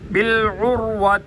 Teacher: عین کو گلے کے درمیان سے ادا کیا جائے گا